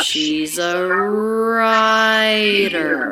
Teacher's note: Really smooth, no jumps or gaps in the pitch there. · So we have smoothly going up